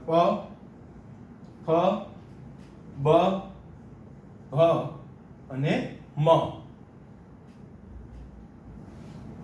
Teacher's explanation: બંને હોઠ ટચ થાય ને પછી બોલી શકાય ને કહેવાય ઓષ્ઠ્ય વ્યંજનો.